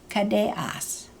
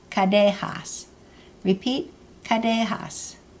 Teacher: For two of us, the question ending is kadeas. The glottal stop in kadeas is really a missing H, and sometimes that H is actually pronounced and written.